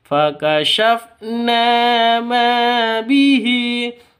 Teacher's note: 'Ma' juga memiliki panjang dua ketukan karena terdapat alif yang didahului oleh fathah. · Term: mad asli atau mad thabi'i